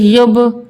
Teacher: با بھی حروف قلقلہ کا حرف ہے، یہاں پہ بھی ہماری آواز پلٹ کر آئے گی